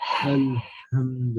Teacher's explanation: what you're doing is you're constricting the airway, right? So you're tightening the airway, and that's what's producing the sharper sound. Al-ha is not a sharp sound, it's a loose sound. · Ha is a sharper sound because it's coming out of a tighter airway